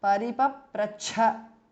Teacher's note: Second cha is Mahapranaha.